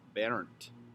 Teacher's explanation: And if you're in Germany where people have my name commonly, some people will roll the R a little bit and it'll be like Bernd. So you can say Bernd or Bernd.